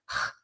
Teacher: thing my learners do here is to make a velar sound a velar fricative moving the back of the tongue up to the soft palate which results in a sound or simply overdo the friction so